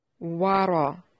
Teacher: را کو موٹا کریں، اس پر فتحہ ہے۔